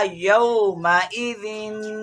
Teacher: ذال پہ غنہ کرنا ہے کیونکہ ذال تنوین والا ہے